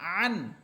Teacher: আইন হরফের মাখরাজ হচ্ছে কণ্ঠনালীর মধ্যখান